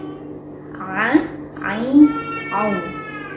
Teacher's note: pengucapan huruf ain ini jelas, tidak disertai dengan keluarnya nafas. Contohnya a, ain, au, tidak disertai dengan nafas. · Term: jahr